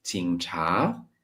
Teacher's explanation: The third tone is not really a third tone, it's more like a neutral tone. It just gets like together with the next one.